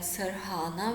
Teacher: so we get an aspirated r sound